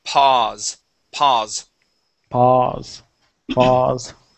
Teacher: instead of pow, it is only an aw sound